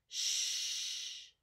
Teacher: you feel that air coming through it's pushing through your teeth and then through your lips